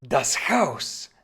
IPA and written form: das haʊs (das Haus)